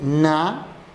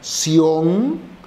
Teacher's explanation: la primera N, na, es nasal y la última, sion, es oral.